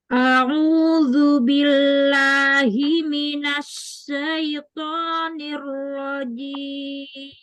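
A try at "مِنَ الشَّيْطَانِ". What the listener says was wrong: Minasnya tafasyi, bukan as-safir, bukan binas, tapi minasya.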